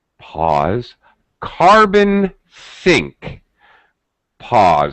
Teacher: like this we call this phenomena a pause carbon sync pause she paused ever so slightly before she said carbon sync and she paused afterward to sort of separate that phrase from the rest of her speaking